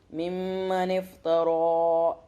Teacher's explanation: یہاں پہ را کو موٹا کر کے پڑھیں گے ایک الف کے برابر